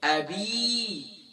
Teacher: یا مدہ ہے، اسے 1 الف کی مقدار کھینچنا